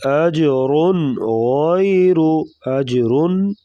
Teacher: اج پہ قلقلہ کریں گے اور رن را کے اوپر دو پیش را کو پور پڑیں گے